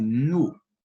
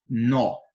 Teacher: na primeira eu pronuncio com menos intensidade no já na segunda devido ao acento agudo que é esse tracinho aqui para cima pra direita eu pronuncio com mais intensidade